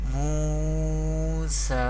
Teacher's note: Therefore there is vaw madda rule is happening here, and here seen has vertical harkat or vertical zabar or khadi harkat or khada zabar. We pronounce vertical harkat by stretching up to one alif or two harkat. We pronounce like this: Musa.